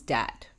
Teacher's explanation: substitution of d for th at the beginning of words. So that becomes dat.